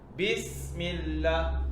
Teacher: Sin tu ada safir, ada bunyi desir tu. Kan? Kalau tak bunyi bis, angin tu tak ada, berarti tak tepat sifatnya.